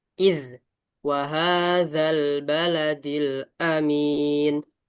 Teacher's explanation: Zanya tipis saja di ujung lidah.